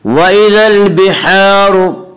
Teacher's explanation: وَإِذَا الْبِحَارُ، وَإِذَا الْبِحَارُ کی را کو پر پڑھیں گے، اس کا قاعدہ ہے کہ را کے اوپر زبر پیش آئے تو را کو پر پڑھا جائے گا، را کے نیچے زیر آئے تو را کو باریک پڑھا جائے گا، اور یہاں را کے اوپر پیش اس لیے را کو پر پڑھیں گے · الف مدہ کو ایک الف کے برابر کھینچ کر پڑھیں گے